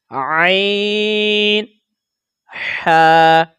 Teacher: یہ حلق کے درمیان والے حصے سے ان کو ادا کیا جاتا ہے